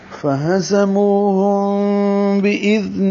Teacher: فہزموہم، ہا کو اقصى حلق سے نکالنا ہے، زا کو زور سے نکالنا ہے، منہ واو مدہ ہے، 2 حرکات لمبا کریں گے، ہم میم ساکن کے بعد با ہے، اخفاء شفوی ہوگا